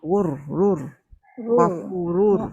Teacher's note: Dia masuk idgham saja, dia tak ada dengung